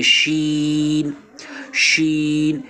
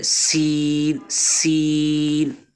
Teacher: جو سین ہے سین یہ صفیریہ میں سے بھی ہے تو سیٹی کی آواز بھی ہونی چاہیے